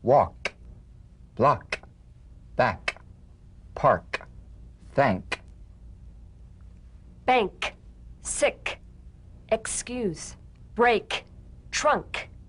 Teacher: feel a crisp tap and a pulsation in the back of the tongue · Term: k drum beat